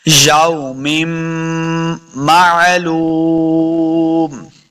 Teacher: بھی میم مشدد ہوگا تو ہم نے غنہ کرنا ہے، تو میم کو میم کے ساتھ ملا کے پڑھیں گے، غنہ بھی کریں گے